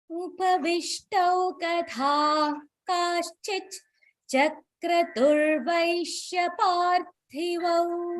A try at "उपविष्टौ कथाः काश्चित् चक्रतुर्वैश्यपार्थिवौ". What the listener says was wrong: No, you should not split the chakra because the cha and the chakratur both has to come together, right?